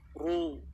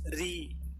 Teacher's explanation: Ketika dhammah dibaca tebal, ru. Ketika kasroh baru dibaca tipis, ri, bukan roi tapi ri.